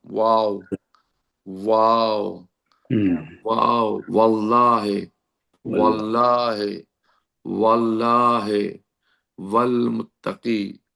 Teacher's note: واو، ہونٹوں کو گول کرنے سے ادا ہوتا.